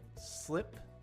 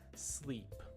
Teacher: the English sound, the short I, is actually a little bit further back in the mouth than the E sound is